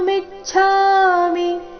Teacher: ವಿ ಮತ್ತೆ ಮಿ ಮೇಲೆ ಆಘಾತ